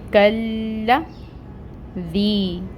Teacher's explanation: تو کاف کو جب ہم لام کے ساتھ ٹائٹلی جوائن کریں گے تو پڑھیں گے کل لا۔ لام کی حرکت کو لمبا نہیں کریں گے، یہ جو فتحہ کی حرکت ہے اس کو 1 کاؤنٹ ہی ادا کریں گے، کلا دی۔ دال کو نرمی سے ادا کیا جاتا ہے، نرم حروف میں سے ہے، اور اس کے نیچے آپ کو کسرہ کی حرکت نظر آ رہی ہے، اور یہاں پہ رول ہو رہا ہے یائے مد کا۔